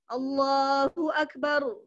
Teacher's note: akbar rohnya biarkan dia bergetar, biarkan mengalir